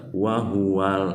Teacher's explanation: Jadi lamnya disukun ke sukun asli ya, dibaca jelas. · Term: alif lam qamariyah